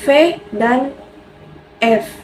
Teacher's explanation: bunyi yang dihasilkan oleh keterlibatan bibir labium bawah dan Gigi dentum atas secaranya bibir bawah sebagai artikulator dan Gigi atas sebagai artikulasi misalnya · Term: bunyi lagbiodental